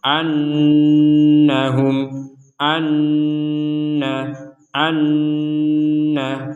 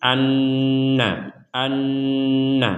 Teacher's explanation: ada Nun bertasydid maka kita mendengungkannya atau kita membacanya dengan disertai dengungan annahum an Anna jadi untuk Nun bertasid ini kita mendengungkannya 100%